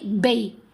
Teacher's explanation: آواز کو ٹیڑھا کریں گے، ٹلٹ کریں گے، سلائیڈ کریں گے۔ اب با کی آواز یا کی طرف ٹلٹ ہوگی۔ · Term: یا لین